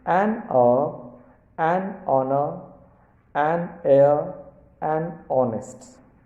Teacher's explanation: In all these words, the first letters h are silent, so an is used before them. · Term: silent h